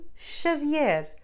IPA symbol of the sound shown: ʃ